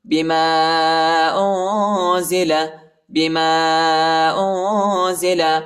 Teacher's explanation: میم کے بعد جو الف ہے اس کے اوپر چھوٹا مد ہے، اس کو تقریباً 2-3 سیکنڈ تک کھینچیں گے، اور ادھر اخفا کریں گے.